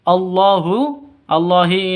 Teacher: ini lafdul jalalah karena ada di tengah panjangnya Hanya dua ketukan